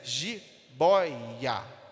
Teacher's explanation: É a sílaba do meio, o boy, que tem mais tonicidade. Então, essa penúltima sílaba é o que nós chamamos de palavras paroxítonas.